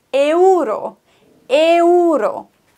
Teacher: E und U werden getrennt voneinander ausgesprochen. Es gibt kein Verschmelzen im Spanischen zu Oi. Wir sagen Euro, die Spanier sagen Euro.